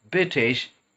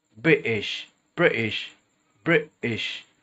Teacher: What we're doing to create the glottal T is we're tightening the section of our throat known as glottis, and what we're doing, we cut a sound out.